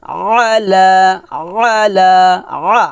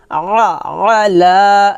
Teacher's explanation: আইনটা একটু চাপ দিয়ে বলতে হবে গলার মাঝখান থেকে